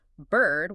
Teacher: an American says bird with a sharp rhotic R, right? But a British speaker drops the consonant and elongates the vowel, making it the sustained smooth sound instead.